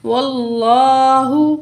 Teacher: واو کے زبر کو لام تشدید سے ملا کے پڑھیں گے، لام کے اوپر کھڑا زبر ہے، 1 کاؤنٹ کھینچ کے پڑھیں گے، واللہ۔